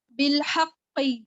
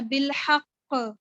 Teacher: وقف کی صورت میں میں نے جب اس کے اوپر جزم لگائی تو میں نے پھر اس کے اوپر اسٹرانگ قلقلہ کرنا ہے